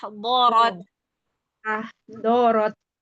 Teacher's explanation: Jangan pakai ujung lidah. Jangan seperti huruf dal.